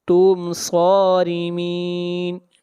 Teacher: میم کو ظاہر کر کے پڑھیں گے، اظہار ہوگا۔ صارمین، صاد کو موٹا پڑھیں گے، صاد حروف مستعلیہ میں سے ہے، اور را کو باریک پڑھیں گے، اور یہاں پر مد عارض وقفی ہوگی۔